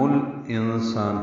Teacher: لام ساکن پڑھا جا رہا ہے، اظہار قمری ہے